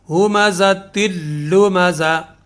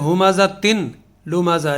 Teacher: ایک لفظ ہے سورہ ہمزہ میں، ہمزہ تلمزہ، اصل لفظ ہے یہ ہمزہ تن لمزہ، لیکن لام جو ہے لمزہ کا جو لام ہے اس کے اوپر تشدید ہے، وہ لام مشدد ہے، شدہ ہونے کی وجہ سے اس کا ہمزہ تن کی جو تنوین ہے وہ تنوین کی آواز ختم ہو کے وہ تا کی آواز سیدھی لام کے ساتھ مل جائے گی